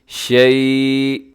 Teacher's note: حمزہ پہ وقف تھوڑا جھٹکے سے، اس کو آپ ساکن کریں گے